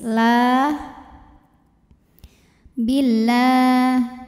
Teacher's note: Lam jalalah dibunyikan secara tartik sebab huruf sebelumnya berbaris kasrah, maka bacanya tipis